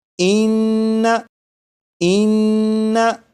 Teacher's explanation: यहाँ पर ये नून मुशद्दद है इसलिए इस नून में गुन्ना करके पढ़ेंगे